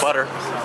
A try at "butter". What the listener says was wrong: You said it with an American accent.